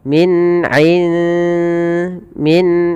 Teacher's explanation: Maka teman-teman apabila kita mendapati dalam bacaan kita ada huruf nun sukun bertemu dengan dal, maka cara membacanya samarkan nunnya kepada huruf dal dan dia dibunyikan seakan-akan terdengar ada eng ya tapi dia tidak eng tapi dia menyamarkan langsung kepada makhrajnya. · dibunyikan seakan-akan terdengar ada eng ya tapi dia tidak eng tapi dia menyamarkan langsung kepada makhrajnya. Kalau di sini makhrajnya ke dal berarti ikhfanya tipis.